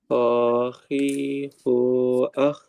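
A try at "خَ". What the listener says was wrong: Cuman satu ketika fathahnya masih kurang sedikit lagi.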